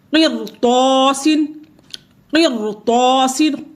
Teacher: اس لیے قاف جو ہے جو را ہے یہاں پر یہ پر پڑی جائے گی. اگرچہ اس سے پہلے زیر آئی ہے، کسرہ آیا ہے، لیکن پھر بھی را کو پر پڑیں گے. قرطاسن، قرطاسن، یہاں پہ را کو پر کریں گے.